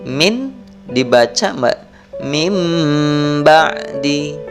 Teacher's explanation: nun matinya dihilangkan, diganti menjadi suara mim mati. Min dibaca mim ba'di. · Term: iqlab